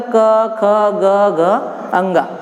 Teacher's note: इनकी ध्वनियाँ कहाँ से निकलेगी? तो कंठ से निकलेगी। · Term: क वर्ग